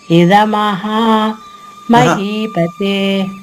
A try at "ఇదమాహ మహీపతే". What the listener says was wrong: ఇదమాహ మహా కాదు.